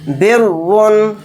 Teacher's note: رائے مشددہ کے اوپر دو پیش ہیں تو را کو موٹا یعنی پر پڑھیں گے